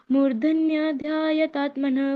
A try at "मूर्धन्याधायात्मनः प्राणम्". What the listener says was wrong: मूर्धन्या बोल दिया, ध तो पूरा है ही नहीं ना। मूर्धन्या तायात्मनः प्राण।